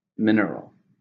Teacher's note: How many syllables are in mineral? 3, stresses on the first.